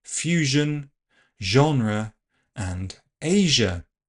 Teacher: last sound is given as palato-alveolar voiced fricative zh